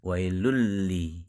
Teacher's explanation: ada bunyi n di kata tersebut tetapi bunyi n tersebut sudah hilang lebur ke huruf lam di depannya wailun menjadi wailul yang tadinya wailunli menjadi wailulli jadi tasydid dalam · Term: idgham